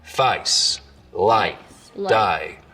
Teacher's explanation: So the diphthong in face starts real low, down around face, light, die. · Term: face lowering